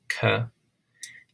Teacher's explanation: it was early on an aspirated k